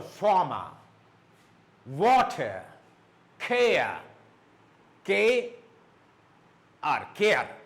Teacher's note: R in the end of syllable, it's silent